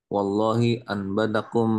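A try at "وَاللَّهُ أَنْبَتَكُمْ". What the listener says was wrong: Wallahu ambatakum, bukan wallahi. Bukan kosong.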